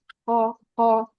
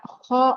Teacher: ko yang sempurna itu adalah ko yang tidak ada ngoroknya